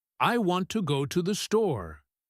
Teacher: In real life, the person will put their vocal energy on the word want.